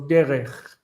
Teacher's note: in later Hebrew, the kaf softened